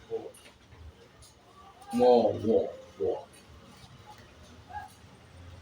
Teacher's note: दांत और होट से व का उच्चारण किया जाता है